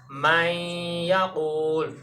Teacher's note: نون کی صفت غنہ کو باقی رکھ کے ادغام کریں گے واو اور یا میں